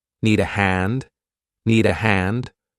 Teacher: But notice you do the rising intonation to make it sound like a question.